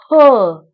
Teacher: आपण तो वर्ण उच्चारताना फुफ्फुसातील हवा जोराने बाहेर पडते. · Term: महाप्राण वर्ण